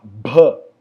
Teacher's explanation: E esse é o B de bola com muito ar